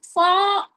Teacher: जो हमारा फ है इसमें दांतों का सिरा लग रहा है। मतलब दांत में यूज़ में आ रहा है।